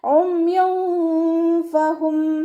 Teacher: നൂനിൻ്റെ സൗണ്ടിന് വ്യക്തം ആയിട്ട് കേൾപ്പിക്കരുത് കേട്ടോ. നമ്മുടെ നാവിനെ മുകളിൽ തട്ടിക്കാതെ നോക്കും വേണം.